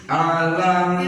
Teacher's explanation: Setelah mim mati bertemu dengan huruf alif atau hamzah, yaitu mim matinya dibaca idhar, artinya jelas, dohir, jelas, cukup satu harakat. Di sini mim jangan didengungkan karena kedepannya ada huruf alif yang berharakat.